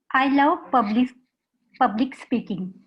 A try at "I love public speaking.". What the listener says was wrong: Perfect. Perfect. This is just a statement.